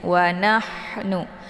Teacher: Ini ha ini adalah ha kecil atau ha pedas. Jadi sifatnya adalah hamas, ada desis angin.